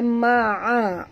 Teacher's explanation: La ma'a, huruf ain jaga makhraj, jangan baca ma'a tapi baca ma'a. Huruf ain ni adalah sifatnya pertengahan, tawasud di antara sifat syiddah dan rakhawah.